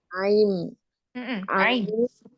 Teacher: Ain itu alhalqi jadi keluarnya dari tenggorokan bagian bagian tengah ya.